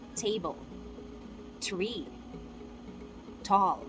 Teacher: in english we say with a hint of a s sound